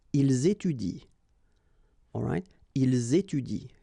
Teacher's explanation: even if it's at the plural form, so ent, well, you don't pronounce it, so you will get ils étudient. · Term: mute